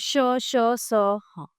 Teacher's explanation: इनका उच्चारण एक प्रकार की रगड़ या घर्षण से उत्पन्न उष्म वायु से होता है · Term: उष्म व्यंजन